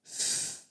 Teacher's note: And the shape or how we move each of these muscles affects the quality of the sound produced. So with F, the air comes from our lungs and our teeth touch our bottom lip, and that restricts the sound, and therefore the F is produced.